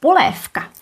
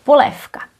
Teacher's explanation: First, I want to show you the regressive assimilation of voice, where a voiced consonant changes to a voiceless one. A well-known word, poléfka, where v becomes f, poléfka. We know that v is voiced, k is voiceless, when you look at the table again. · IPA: [poléfka]